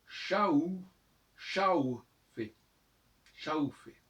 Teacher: c'est pas vraiment un U, enfin, on entend ça U, mais c'est un W